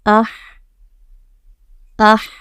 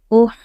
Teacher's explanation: ہا جو ہے وہ بیچ حلق سے، یعنی ہمارے گلے کے بیچ والے حصے سے نکلتا ہے، تو اس کو ہا نہیں بولنا ہے، اس کو بولنا ہے ہا۔